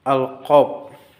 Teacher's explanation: Dari langit-langit belakang, sifatnya itu seperti letupan, bersuara tebal.